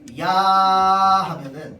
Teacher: 야 하면은 뒤에는 아만 들려. 그래서 처음에 잠깐만 야가 나고요. 그 뒤에는 계속 아 소리가 납니다.